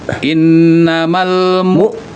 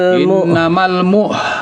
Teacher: Contohnya kalau untuk yang tertahan misalnya kita membaca huruf hamzah atau huruf ain dalam keadaan mati misalnya ni innamal mu langsung bunyinya tertahan dan udaranya juga tertahan. Kalau pakai hembusan salah deh. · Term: syiddah